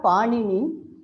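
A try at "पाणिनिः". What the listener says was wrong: Paninihi. You have to sing. Don't drop the visarga.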